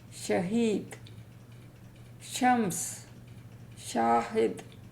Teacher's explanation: When we say the SHEEN, our tongue touches the upper palate, exactly the roof of the hard part of the mouth, and the sound is SHEEN.